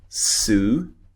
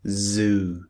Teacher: Now, why are they similar? Because the position of the tongue in the mouth is exactly the same in both sounds. The only difference between the two sounds is that one of them is voiced and one of them is unvoiced.